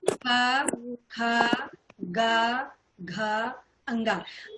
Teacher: तो यहाँ इसका स्पर्श जो है कंठ से हमारे हो रहा है। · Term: का वर्ग